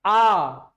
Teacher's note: विवृत स्वर जब मुख पूरा खुला जाता है।